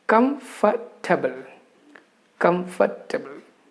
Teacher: In between, the letter R is silent. We do not pronounce that letter R.